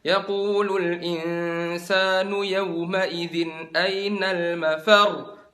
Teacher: Jadi di akhirnya itu kan ada tasdidnya, mafar. Kalian angkat suaranya. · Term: naber